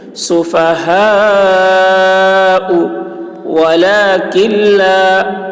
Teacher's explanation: نون نہیں پڑھا جائے گا، کاف کو لام سے ملا کر پڑھیں گے